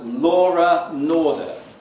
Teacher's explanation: But she pronounced a nice linking R.